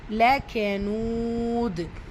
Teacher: கல்கலத்துல் குப்ரா முடிவுல வந்திருக்கிறதுனால பெரிதாக அசைச்சு முடிக்கணும்